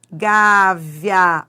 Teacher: Ditongo crescente, que é aquele que vai da semivogal para vogal